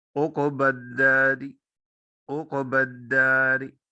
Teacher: چونکہ یہاں پہ حرکت جو ہے وہ کسرے کی ہے، اس لیے اس راگ کو باریک پڑھا جائے گا